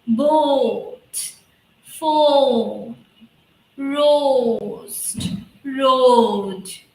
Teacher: So first the O sound is coming and it is ending with a small A sound.